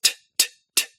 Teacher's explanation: It's also made in a slightly different spot in your mouth. In English, T's are made with the tip of your tongue pulled away, back from your upper teeth, onto your alveolar ridge.